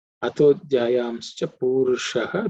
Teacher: The sha is cerebral sha